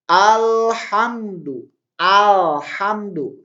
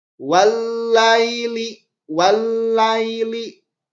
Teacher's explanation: Kalau alif lam syamsiyah ini si alif lamnya ini harus dimasukkan. Dimasukkan ke huruf selanjutnya.